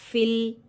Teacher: ساکن حرف یہاں ساکن حرف کو ایک بار اپنے سے پہلے والے حرف سے ملا کر پڑھتے ہیں، ساکن حرف کی آواز اپنے مخرج میں رک جاتی ہے۔ فا میں اس کی صفت ہمس ہوگی